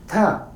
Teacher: Last letter is ta is a voiceless dental aspirated stop